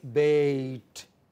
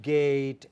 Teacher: It is from front, between half closed and half open, unrounded, to front, half closed.